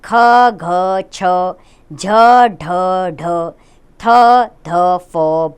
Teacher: जिन व्यंजनों का उच्चारण करने में अधिक श्वास और प्रयत्न की आवश्यकता पड़ती है उन्हें महाप्राण व्यंजन कहते हैं